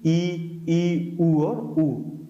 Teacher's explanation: जब जीभ तालु से सटी रहती है तो वो हमारे संवृत स्वर कहलाते हैं,